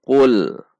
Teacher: lam sukun tidak boleh dibaca memantul untuk menghindari supaya tidak memantul adalah dengan tidak langsung melepas ujung